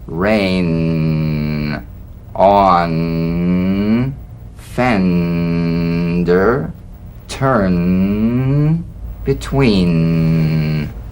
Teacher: The N is a nasal consonant made with the tongue blade to the upper gum ridge. It's most resonant and it's well forward placed.